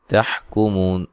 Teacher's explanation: مو مدہ ہے، وقفاً بڑی مد کے ساتھ پڑھ سکتے ہیں۔